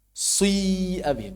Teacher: Ada dhammah yang bercampur sedikit dengan kasrohnya. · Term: dhammah bercampur dengan kasroh